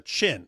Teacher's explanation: So some Arabs can't pronounce the ch sound, so they say sh, and wherever is from, he can't pronounce sh, so he says ch.